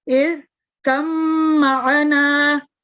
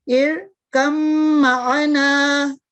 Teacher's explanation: پہلا حرف لکھنے میں تو باقی رہتا ہے جو کہ با ہے، مگر پڑھنے کے لحاظ سے بعد والے حرف میں شامل ہو کر اپنی حیثیت ختم کر دیتا ہے، یعنی با کی ہم آواز کو ختم کر دیں گے تو اس کو پڑھنے کا طریقہ یہ ہوگا ارکم معنا، ٹھیک ہے، یا ہم غنہ کریں گے ارکم معنا۔